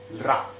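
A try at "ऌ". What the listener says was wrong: La. La. Because the r very short.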